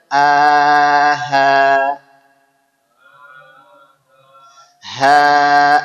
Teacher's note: jadi huruf H keluar di mana tenggorokan terjauh sama dengan huruf a